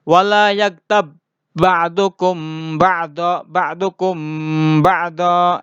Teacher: Jadi tidak dibaca qalqalah lagi tapi langsung masuk ke huruf ba berikutnya. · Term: idgham mutamatsilin